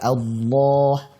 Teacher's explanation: a tipis dan hamzahnya fathahnya jelas